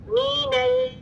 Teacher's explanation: मीनल, ये मीनल नहीं है, मीनल एम ई नी लिखे. मीनल लाम साकिन तवस्सुत, थोड़ी आवाज चल रही है